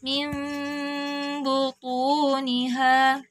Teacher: nun sukun bertemu dengan huruf ba. Ditahan dulu juga suaranya. Kita bunyikan mim disamarkan.